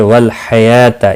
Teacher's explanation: یا کے اوپر کھڑی زبر ہے، ایک الف کے برابر کھینچ کر پڑھیں گے